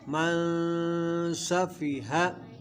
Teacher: یہاں نون ساکن ہے، نون ساکن کے بعد حروف اخفاء میں سے سین آ رہا ہے تو اخفاء کریں گے، یعنی گنہ کر کے پڑھیں گے